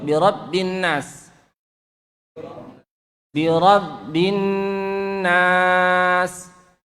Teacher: Nun itu dengung, gunnah ya. Nun bertasydid, dengung, lamanya 2,5 sampai 3 harokat. Ingat, setiap dengung itu takarannya lebih lama daripada panjang 2 harokat.